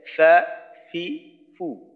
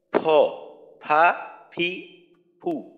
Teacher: যখন আরবিটা আরবিটা উচ্চারণ করব তখন নিচের ঠোঁটের পেট সামনের উপরের দুই দাঁতের আগার সঙ্গে লাগাইয়া ফা ফি ফু, আর বাংলা ফ উপরের ঠোঁট নিচের ঠোঁটের সাথে লাগাইয়া